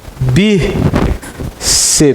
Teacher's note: É a penúltima sílaba forte terminada em PS.